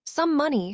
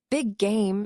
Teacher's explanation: When the same consonant sound ends one word and begins the next, they blend into one longer sound. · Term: Same sound linking